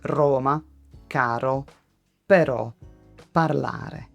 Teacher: The English R usually sits quite far back in the mouth. Italian R is more forward. Your tongue moves closer to the area just behind your top teeth.